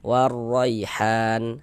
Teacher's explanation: Sebelum ya sukun di sini ada harokat fathah. Nah, maka huruf ya sukun yang sebelumnya harokat fathah, maka huruf ya sukunnya adalah huruf lin. Maka kita baca lunak lembut. Warraihan, han dibaca panjang.